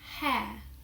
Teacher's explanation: Firstly, I'm going to talk about the letter R. We tend not to pronounce R in words where R is not followed by a vowel.